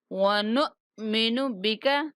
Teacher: حمزہ ساکن ہے، جھٹکے کے ساتھ ادا کریں گے ، ونؤمن بک، بکا نہیں کہیں گے، کاف کو کھڑا نہیں